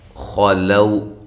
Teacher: خا کو موٹا، لو واو لین ہے